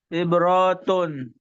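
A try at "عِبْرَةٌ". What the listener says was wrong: Coba diulang. Ibrotun. Ro-nya nggak panjang. Yang ketiga. Ro-nya nggak panjang. Ibrotun.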